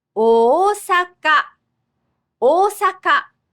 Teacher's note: And the Chinese reading for big is a double vowel, o.